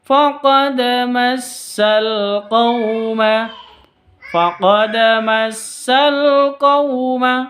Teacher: Faqad di sini ada dal sukun, dal mati, qalqalah suro karena ada di tengah. Tidak boleh kalau di akhir berarti qalqalah kubro, kalau di tengah qalqalah suro.